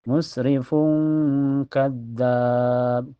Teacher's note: Cara bacanya tanwin domahnya disamarkan ke kaf dan ditahan sampai terasa ke hidung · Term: ikhfa ab'ad, ifa hakiki